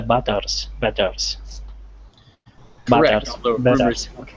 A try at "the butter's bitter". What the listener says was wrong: no s on bitter okay so try saying it one more time